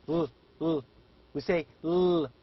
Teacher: the front part of the tongue and the alveolar ridge are responsible to produce these sounds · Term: alveolars